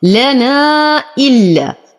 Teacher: حرف مد وبعده همز في كلمتين، فالمد جائز منفصل يمد بمقدار 6 حركات بالإشباع للإمام ورش.